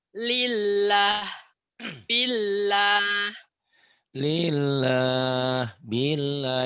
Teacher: pada Allah dibaca tipis karena sebelumnya pada Allah berbaris di bawah berbaris kasrah